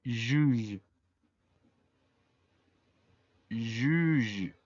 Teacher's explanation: La J se pronuncia como una SH, como sh, pero un poquito más sonoro. La U, recordemos que se pronuncia como como si tuviéramos la boca en forma de U, pero diciendo I.